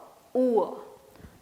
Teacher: Two sounds together. First sound is oo, second sound is a, oor.